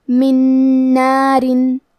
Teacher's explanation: کلمت من کے آخری میں نون ساکن ہے، پھر حرف نون آتا ہے کلمت نار، نون حروف الادغام بغنہ میں سے ہے تو ہم یہ حکم کو غنہ اور تشدید کے ساتھ ادا کریں گے۔ من نارن۔